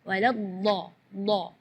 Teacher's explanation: huruf dot itu keluarnya dari pinggir lidah maupun yang kanan ataupun yang kiri atau dua-duanya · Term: huruf dhad